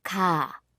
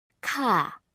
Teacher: ka requires that you push out a lot of air. Meanwhile, ga does not need you to push out much air, but you should use your vocal cords more.